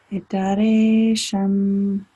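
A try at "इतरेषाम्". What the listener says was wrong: That's a long ah. Itaresham.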